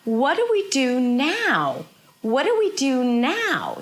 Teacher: So we have what that is really high in pitch. Notice that she's not pushing her voice to say the what and the now. She just goes high in pitch.